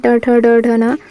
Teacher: ट ठ ड ढ न मूर्धा में आते हैं।